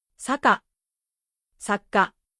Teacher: In the first one, the sounds flow smoothly. In the second one, there is a pause before the ka. That pause is the double consonant.